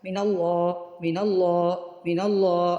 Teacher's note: اس کو ایسا تو نہیں نا کیا نون کے اوپر تشدید ڈال دیا من اللہ، ایسا تو نہیں نا کیا، من اللہ من اللہ من اللہ، نون کو جلدی سے ادا کیا، اس کو کہتے ہیں غنہ آنی۔ غنہ آنی جو ہے وہ فوراً سے ادا ہو جاتا ہے، اس کی مقدار کوئی نہیں ہوتی، اس کو جلدی سے ادا کرنا ہوتا ہے، ٹھیک ہے۔